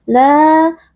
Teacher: la dibaca panjang, 4 atau 5 harakat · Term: mad wajib muttasil